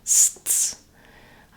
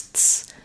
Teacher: So there's a little interruption between the S sounds.